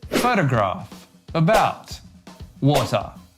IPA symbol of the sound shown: ə